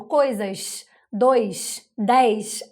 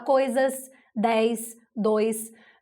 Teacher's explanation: aqui no Rio a gente chia demais